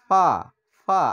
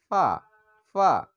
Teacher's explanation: ফা হচ্ছে উপরের দাঁতের আগা এবং নিচের ঠোঁটের পেট থেকে হবে ফা ফা আর সম্পূর্ণ বাতাসটা বের হয়ে যাবে